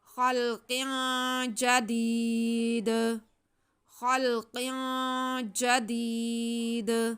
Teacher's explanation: या साकिन से पहले ज़ेर है, या मद्दा है, इसे खींच के पढ़ेंगे। और काफ के नीचे दो ज़ेर हैं, तनवीन है, आगे जीम हुरूफ़ इख़्फ़ा में से है, यहाँ पे गुन्ना होगा। · अब जब हम वक्फ करेंगे तो वक्फ में हमारे पास दाल के नीचे दो ज़ेर हैं तो हम दाल को साकिन कर देंगे। जब दाल साकिन हो जाएगा तो इस पे कलकला होगा।